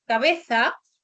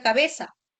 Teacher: Es una característica, dice, propia del sur de España, que es el uso de la S en lugar de la fricativa interdental. O sea, en lugar de decir cabeza con la interdental, esta variedad dialectal del español decía cabeza, que es lo que tenemos o mantenemos hasta el día de hoy. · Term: ceseo